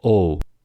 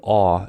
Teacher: To know how much the jaw has to drop, compare aw with another round vowel o. O is a mid-high vowel, and aw is a mid-low vowel. By the way, o as a pure phoneme occurs in Korean and French, but not in standard American English, where it occurs only as a diphthong sound, o.